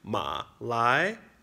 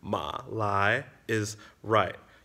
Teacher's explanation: So you got to link your tones together. Ma is low, so then lai has to start from low and go higher.